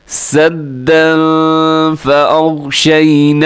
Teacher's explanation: सद्दन पे इख्फा हो रहा है, यानी फिर नाक में आवाज़ को लेके जाना है, तनवीन के बाद फ़ा है।